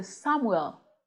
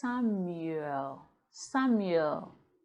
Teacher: There's a ye sound before the oo.